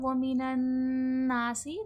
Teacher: مَا يَغِيظُ۔ آیت نمبر 11 دیکھیں، وَمِنَ النَّاسِ، نا پہ دیکھیں نون پر تشدید ہے، نون مشدد کا غنہ ہے اور الف مدہ ہے کیونکہ الف سے پہلے زبر ہے، کھینچ کے پڑھا جائے گا ، اس میں غنہ بھی ہوگا اور کھینچ کے پڑھا جائے · سین حرف صفیر ہے، سختی سیٹی کے ساتھ ادا ہوگا۔